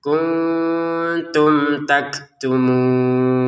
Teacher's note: Taktumunnya kita baca 6 harokat